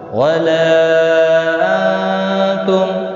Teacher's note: نون کا اخفا ہوگا اور میم کا اظہار ہوگا